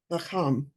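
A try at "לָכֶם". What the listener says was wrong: If we look at the ending vowel.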